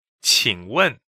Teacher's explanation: 请 is a third tone and 问 is fourth tone